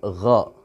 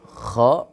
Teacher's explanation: Huruf gha itu suaranya ngorok, tapi ngoroknya itu tidak sekeras apa yang bunyinya dari kha itu.